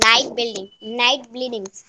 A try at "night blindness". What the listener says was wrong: blind. It is night blindness. not bleeding. Blind.